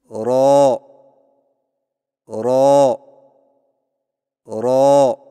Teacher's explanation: را کی ادائیگی میں زبان کی نوک کی پشت کو اوپر والے دانتوں کے مسوڑوں سے لگا کر موٹی آواز میں پڑھیں